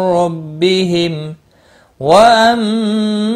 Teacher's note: میم ساکن پر اظہار ہوگا، اس اظہار کو اظہار شفوی کہتے ہیں